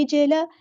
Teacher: جیم ساکن یہاں پہ قلقلہ ہوگا ، عین کو وسطی حلق میڈل تھروٹ سے ادا کرنا ہے،